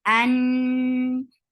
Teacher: Noon will get sifa of gunna, and this is akmal gunna, so keep the sound in your nose for a longer time. An, and fatha is very short.